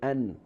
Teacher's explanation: The tip of our tongue connects that part, the upper gum, but at the same time, the sound or the voice comes out from our nose, our nasal passage. When we say an, when you pronounce letter noon, so the tip of our tongue is exactly on the upper gum. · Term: nasal sound